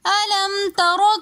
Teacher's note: أَلَمْ تَرَ میں را کو ہم نے موٹا کر کے پڑھا کیونکہ را کے اوپر زبر ہیں۔ را کے اوپر جب بھی زبر اور پیش ہوگا تو ہم را کو موٹا پڑھیں گے، اور اگر زیر ہوگا تو ہم را کو موٹا پڑھیں گے۔